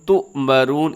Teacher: تُؤْمَرُونَ اس کو جھٹکے سے آپ نے پڑھنا ہے کیونکہ یہاں پر حمزہ ہے، حمزہ کو ہمیشہ جھٹکے کے ساتھ پڑھا جاتا ہے.